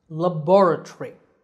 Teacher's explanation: here the second syllable is stressed